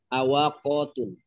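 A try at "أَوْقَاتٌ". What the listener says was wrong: Au, bukan awak. Au, qatun.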